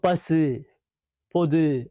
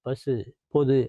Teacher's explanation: பசு பொது அப்படிங்கும்போது உதடுகள் குவியும். ஆக அந்த ஓசை வந்து உங்கிற ஓசை முழுமையாக ஒளிக்கும் அதுக்கு பேர்தான் முற்றிய லுகரம். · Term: முற்றியல் உகரம்